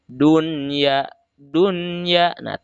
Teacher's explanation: tapi harus dibaca Idhar Idhar itu dalam artian jelas Apanya yang harus dibaca jelas yaitu Nun sukunnya atau tanwinnya seperti di sini dunia dunia tidak boleh dibaca Dua tapi dunia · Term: izhar